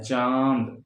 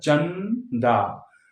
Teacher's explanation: चंदा नासिका से ये भी है लेकिन पूरी तरह से नहीं है